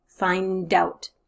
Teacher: The D at the end of find pushes forward to that vowel sound which is following it.